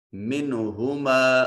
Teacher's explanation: اور الف خالی از حرکت ما قبل مفتوح الف مدہ، منہما، نون ساکن کے بعد ہا حرف اظہار ہے، نون کو ظاہر کر کے پڑھیں گے